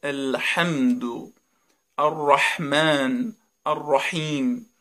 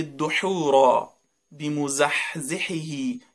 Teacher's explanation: میشه پس مثل کسی که میخواد تو زمستون دستشو گرم بکنه این حرف یه حرف حلقی محسوب میشه در وسط حلق